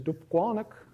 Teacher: So you get stress on the first 2 syllables, more stress actually on the second one than on the first.